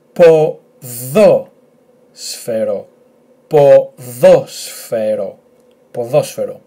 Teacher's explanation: The emphasis on this 'omicron', so it's at the second syllable.